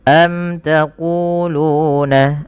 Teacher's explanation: Mim mati bertemu dengan ta dibaca dengan jelas suara mimnya karena dia idhar syafawi. Kemudian panjang ku dan lu harus sama karena kedua-duanya mad tabi'i